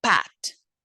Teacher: It is voiceless, bilabial, stop.